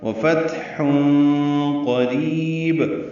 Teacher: ہے، اس پہ ہمس ہوگا، فتح یعنی سانس جاری رہے گی، حا وسط حلق سے ادا کریں گے ، تنوین کے بعد قاف آنے کی وجہ سے اخفا ہوگا، · سانس جاری رہے گی، حا وسط حلق سے ادا کریں گے، تنوین کے بعد قاف آنے کی وجہ سے اخفا ہوگا ، وفتح قریب، قاف پر پڑھیں گے، را باریک پڑھیں گے،